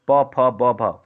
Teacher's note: प फ ब भ दोनों ओठ आपस में टकराते हैं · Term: ओष्ठ वर्ण